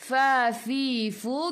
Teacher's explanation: gigi atas menyentuh perut bibir bawah.